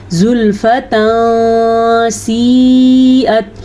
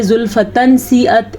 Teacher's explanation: تو اس نون تنوین کو ہم کسی حد تک چھپا کے پڑھیں گے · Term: اخفا